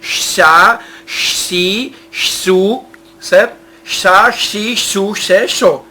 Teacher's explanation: É como se você estivesse falando com uma criancinha, um som de um X no S.